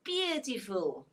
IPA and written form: ˈbjuːtɪfl (Beautiful)